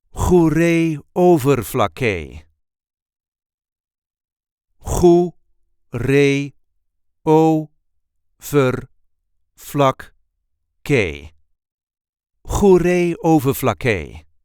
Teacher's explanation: There is a light emphasis on the first syllable of the second word.